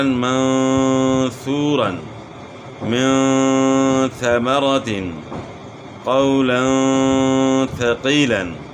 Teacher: نون اور تنوین کو پڑھتے ہوئے کنارہ زبان کو مسوڑوں کے ساتھ نرمی سے لگا کر غنہ کریں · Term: اخفا